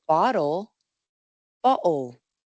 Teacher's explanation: La explosión de aire ha sido eliminada. · En vez de bloquear y soltar el aire con la lengua, nomás se cierra y abre la garganta con una oclusión glotal, representada así, tal como cuando uno dice oh.